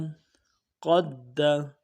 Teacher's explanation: قاف دال زبر قد، حروف قلقلہ ہے، دال قلقلہ کریں گے